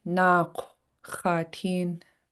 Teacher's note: It's important to pronounce this underline K in the back of your throat and also with your lips rounded. That's what the W tells us to do.